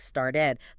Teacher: And the ending the ed. It's pronounced like a separate little syllable